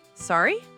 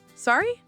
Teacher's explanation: try saying, sorry, with a rising intonation